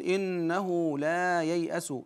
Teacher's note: نجد واو صغيره تحت الهاء وهذا يدل على ان الهاء موصوله الهاء هنا وقعت بين متحركين اذا حكمها الصله يعني امدها بمقدار حركتين